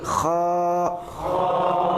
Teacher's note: masih tenggorokan bagian atas. Tenggorokan bagian atas. Dekat dengan lidah.